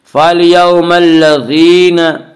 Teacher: फ़लयौमल्लज़ीना या मद्दा वो या जो साकिन उससे पहले ज़ेर हो, या मद्दा को 1 अलिफ के बराबर खींच कर पढ़ेंगे